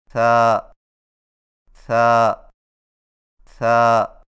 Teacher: ثا کی ادائیگی میں زبان کی نوک کو ثنایا علیہ کے اندرونی کناروں سے نرمی سے لگا کر باریک آواز میں پڑھیں